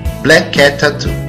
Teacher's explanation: Ouve-se o som K apenas uma vez entre as palavras black, cat. Tampouco é pronunciado duas vezes o som T ao final de cat e o início de tattoo